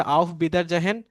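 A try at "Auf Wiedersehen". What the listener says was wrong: আউট বিটার জেহেন না, আউট বিটার জেন, আউট বিটার জেন, আউট বিটার জেহেন। আর উচ্চারণ কিন্তু হবে না, হ্যাঁ মনে রাখবেন আর উচ্চারণ হবে না, আউট বিটার জেন।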